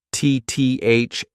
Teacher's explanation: There are other languages that have THs, but a lot of languages don't have THs, so it's very difficult for people to grasp it. Get your tongue in between your teeth, and this is a voiced TH, so I want that to be TTHHH.